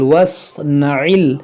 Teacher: عین کو وسط حلق سے ادا کیا جاتا ہے